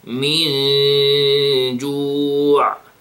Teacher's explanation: I hid the noon, and I gave it what? 2 seconds, right? And then again, the sound of the ayn. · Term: ikhfa